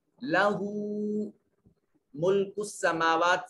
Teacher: سین میم اور واو دونوں کے اوپر الف المدیہ صغیرہ ہے, دونوں کو برابر لمبا کریں گے اور ایک الف کے برابر لمبا کریں گے